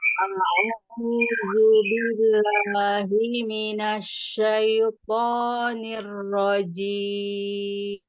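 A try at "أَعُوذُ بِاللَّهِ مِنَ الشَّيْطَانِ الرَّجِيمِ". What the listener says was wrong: Nah, coba nada suaranya itu mau disamain, jangan ada yang naik, yang turun, naik lagi. A'udzubillahi minasyaitonir rajim. Mau sempurna huruf ain yang berdhamma, jangan a, tapi a'udzu.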